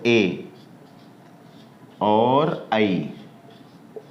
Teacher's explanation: ए और आई, ये दोनों जो वर्ण हैं ये कंठ और तालु से बोले जाएंगे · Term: कंठ तालु